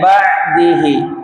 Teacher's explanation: Ba'dihi ba'dihi ainnya dinaikkan ke tengah tenggorokan. Jangan di bawah tenggorokan.